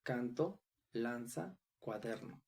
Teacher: Palabras graves o llanas, donde el acento recae en la penúltima sílaba, como canto, lanza, cuaderno.